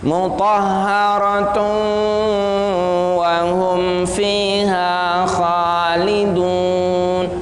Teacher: Tanwin bertemu waw harus digunnahkan. Tanwinnya dimasukkan ke waw kemudian digunnahkan. Suaranya, konsentrasinya di hidung.